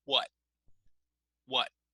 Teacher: In North American English, we generally stop on the T.